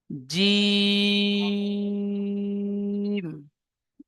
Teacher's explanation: জিম অক্ষরটি তিন আলিফ পরিমাণ টান দিয়ে পড়তে হবে।